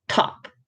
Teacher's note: aspiration is a little puff of air that we tend to use for example in the word top